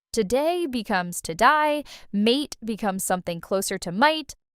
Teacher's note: The vowel shifting in Australian English is honestly the most dramatic of the three. There's a lot of diphthong movement, vowels that start in one place and glide somewhere else entirely. And that glide is more extreme than in American or British.